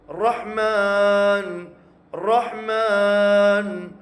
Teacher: ரஹீம் பிஸ்மில்லா சொல்லும்போது அந்த அல்லாஹ்வுடைய ஹாவுக்கு வந்து கனமா ஹா சொல்லணும். அடுத்து அர்ரஹ்மான் அர்ரஹ்மான் அர்ரஹீம் அப்படின்னு சொல்லும்போது அந்த ஹா வந்து மெல்லினமா சொல்லணும்